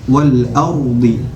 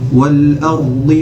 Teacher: huruf ra nya tafkhim, tebal